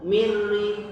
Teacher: Mir rizqin, tidak boleh mir rizqin, bahkan tidak boleh min ri, tapi langsung mir ri. Nunnya seperti hilang, masuk ke ro yang ditasdid. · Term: idgham